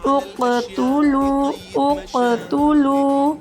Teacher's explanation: اب یہاں پر ہم نے ایک اور بات کا دھیان رکھنا ہے کہ قاف ساکن ہے، قاف حروف قلقلہ میں سے ایک ہے، اس لیے ہم اس کو خوب جماؤں سے خوب اچھے طریقے سے اس کو ادا کریں گے